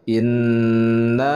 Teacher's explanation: Inna. Nah, lafaz na di sini adalah mad jaiz munfasil, dibacanya 4 harakat, jadi dibaca panjang